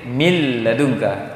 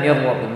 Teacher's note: Istilahnya idgham bila gunnah. Karena itu idgham menggabungkan tanpa gunnah, hilang gunnahnya.